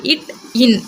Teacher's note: மெல்லின எழுத்து மூக்கை கொண்டு பிறக்கும். நாவின் நுனி அன்னத்தின் நுனியை பொருந்துவதால் பிறக்கும் எழுத்து